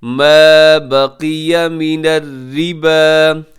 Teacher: قاف کے نیچے اگرچہ زیر ہے لیکن پھر بھی آپ نے قاف کو موٹا پڑھنا ہے، اس کو اپنے باریک نہیں پڑھنا